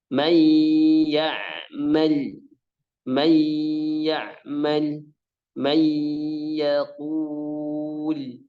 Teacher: Jadi idgham bi gunnah dimasukkan dengan gunnah, dimasukkan dengan dengung. Yang mana gunnah itu keluarnya lewat khasyum, lewat hidung.